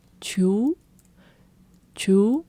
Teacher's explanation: Kind of like chimichurri, but with a high rising tone at the end.